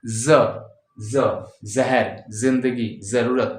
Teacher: जब दोनों दांत को ऐसे सटाएंगे और जीभ हल्की सी वहां पे रखेंगे, टच करेंगे, तो सीटी की आवाज आएगी